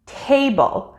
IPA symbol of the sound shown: eɪ